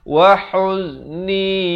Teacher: Huz di pertengahan kerongkong.